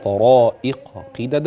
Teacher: الطاء ما تجيش مني تاء والقاف المكسوره ما تجيش مني كاف